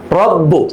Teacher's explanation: জজম হলে যে কলকলাটা হইতো এটা কিন্তু এখানে আর হবে না কারণ এখানে তাজদি আছে